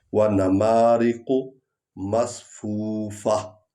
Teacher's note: مصفوفہ میں ہا تو آ نہیں رہی، ہا کی آواز نکلنی چاہیے۔